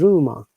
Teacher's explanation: letter R at the first letter must be pronounced, but the letter at the end is not pronounced at all. So it is rumor.